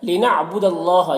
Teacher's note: یہاں پر اللہ کے لام سے پہلے زبر ہے، اللہ کے لام کو پر پڑھیں گے